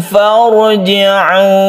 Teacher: ra sukun yang sebelumnya ada fathah. Ini disebut dengan tafkhim atau mufakhamah, dibaca tebal.